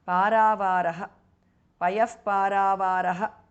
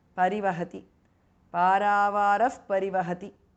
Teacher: Visarga changes to upadhmaniya again.